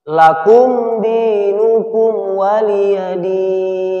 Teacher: mim sukun nya ini ini matinya dibaca dengan jelas jelas dia tanpa ditahan